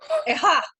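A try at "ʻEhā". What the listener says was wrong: When we pronounce this one, don't forget to put the kako. Yeah, that's the only one with the kako. So you can go, ha, ha.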